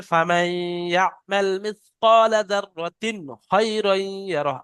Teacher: ইদগামে নাকিস সুতরাং বলে। ফামান কেউ পড়লে ভুল হবে, ফামাই পড়তে হবে, আর গুণনাও করতে হবে।